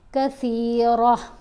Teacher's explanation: گول تا کے اوپر اگر وقف آ جائے تو یہ سائلنٹ ہو جاتی ہے اور ہا کی آواز دے گی